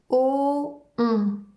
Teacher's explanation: la bouche prend la même forme que pour le son O et ensuite le son devient nasal. Encore une fois, en gardant la langue à plat dans la bouche. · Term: le son ON